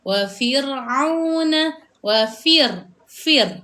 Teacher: Ra ini mati. Jadi sebelum huruf ra yang mati itu sebelumnya didahului huruf berbaris bawah. Maka dekat sini juga kita perlu membaca dengan bacaan yang nipis. Maka dia akan jadi wa fir'auna fir.